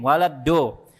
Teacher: Dal tapi tebal dalnya tafkhim. Waladdo. Yang kesentuh ujung lidah duluan, jadi bunyinya seperti itu.